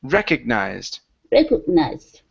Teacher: This is recognized. So the stress is at the very beginning.